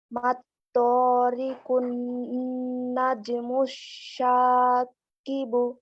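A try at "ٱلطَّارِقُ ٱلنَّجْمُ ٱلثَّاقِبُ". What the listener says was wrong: শিন না ওটা, সাকিবু।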